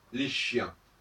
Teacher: le marqueur du pluriel il est bien marquée il est bien indiqué les chiens avec un s sauf que ça ne s'entend pas